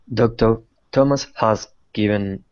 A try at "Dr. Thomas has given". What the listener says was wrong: You didn't drop the H. No, but it's Thomas's. It sounds better.